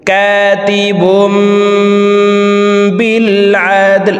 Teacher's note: তানউইনের পর ইকলাবের হরফ বা আসছে, এই কারণে এই ছোট্ট মিম দ্বারা পরিবর্তন করিয়া গুন্নার সহিত পড়ব। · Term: ইকলাব গুন্না